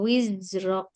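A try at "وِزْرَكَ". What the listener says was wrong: Yuk, wizrok. Jangan lidahnya di dalam. Wizrok. Kalau wiz itu di luar ya. Wiz ada z. Wizrok.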